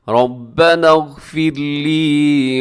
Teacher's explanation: ربنا، ربا میں کیا ہے، را موٹی پڑی جائے گی